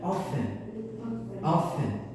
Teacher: the T is silent